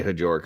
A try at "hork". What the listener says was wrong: I think it's hork, isn't it? Isn't the J silent? Jork? Nah, that doesn't sound right.